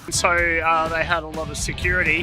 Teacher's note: lot and of are linking and we get a very weak form of of reduced down to /ə/